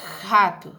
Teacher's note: o R que é considerado velar, né, que é produzido aqui na região do véu palatino, né, por isso é velar.